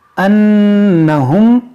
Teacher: यहाँ पर नून मुशद्दद है, इसमें गुन्ना करेंगे।